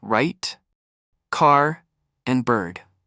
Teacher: Many learners make the mistake of pronouncing it like the rolled R in other languages, but in English, the tongue doesn't roll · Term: R sound